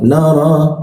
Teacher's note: Bibirnya a, tapi keluarnya o.